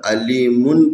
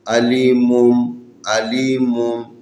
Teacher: ہم نے نون کی آواز کو میم کی آواز میں تبدیل کر کے پڑھنا ہے